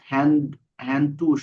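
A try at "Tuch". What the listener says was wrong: টুস না, টুক। এই যে উ আছে, ওর পরে আসলে খ হয়।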